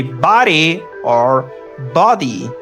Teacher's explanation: This is the flap D.